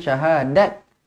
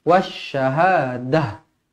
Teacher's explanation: Ini namanya ta marbutah kalau dia bulat macam ni. Ta marbutah kalau berhenti dia akan jadi huruf ha yang bertanda mati.